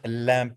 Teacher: lateral approximate air flows around the side of the tongue